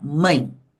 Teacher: a gente fala mãe abre a boca uma vez só e o e assume o som do I por isso que aqui o e é uma semivogal o